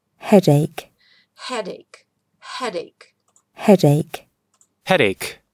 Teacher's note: Обратите внимание, что ударение в слове «головная боль» падает на первый слог.